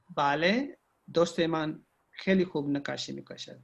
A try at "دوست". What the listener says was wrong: اچھا یہ دوست ہے، تھوڑا سا اس کو کھینچ کے بولنا ہے. دوست اوریجنل لہجہ ہے نا اس میں.